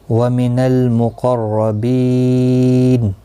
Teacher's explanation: وَمِنَ الْمُقَرَّبِينَ لام ساکن کو ہلانا نہیں، قوف مستعلیہ ہے پر پڑھا جائے گا، رو زبر کی وجہ سے پر پڑھا جائے گا · وقف کی صورت میں نون ساکن پڑھا جائے گا، وقف بالاسکان ہوگا، مد العارض وقفی ہوگا، 3 سے 5 سیکنڈ یا 3 سے 5 الف کی مقدار کے برابر کھینچ کر وقف کریں گے، وقف بالاسکان ہوگا۔